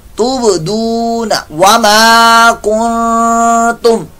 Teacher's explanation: تُب با ساکن کا قلقلہ